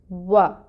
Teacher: واو کے لیے اپنے ہونٹوں کو گول کریں، واو ادا کرتے ہوئے اپنے ہونٹ گول کرتے ہیں، اور پھر فتحہ ہے اوپر، زبر کی حرکت ہے، ایک حرکت پڑھیں گے، وا، ہونٹ پہلے گول کریں گے اور پھر زبر کی ادائیگی کے لیے اوپر کی طرف کھولیں گے منہ کو